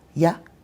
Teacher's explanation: then there's you where we'll just say ya. Very very short sound.